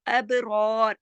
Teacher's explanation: اب با پہ کلکلا ہوگا، اب ہلا کے پڑھیں گے · اب یہ را جو ہے موٹا پڑھا جائے گا کیونکہ صبر کے ساتھ ہے